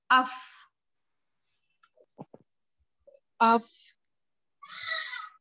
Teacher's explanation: फा, ऊपर के 2 दांत नीचे के होठ के अंदरूनी यानी गीले वाले हिस्से से टच करेंगे। अफ, अफ। ठीक है, यहाँ पर हो गया हमारा फा अदा हो गया।